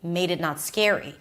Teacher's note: she says it a little faster and lower in pitch